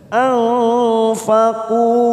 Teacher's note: Nun sukun bertemu fa, ikfa ausat samarkan bunyi nun sukun 3 ketuk. Anfaqu dhamma bertemu waw sukun 2 harokat. · Anfaqu dhamma bertemu waw sukun 2 harokat. Kuman nun yang bertasdid bacaan gunnah kita tekan 3 ketuk.